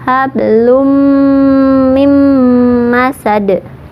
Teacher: ditahan 2 harokat sampai masuk ke rongga hidung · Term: idgham bi gunnah